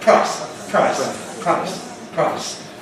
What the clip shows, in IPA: praɪs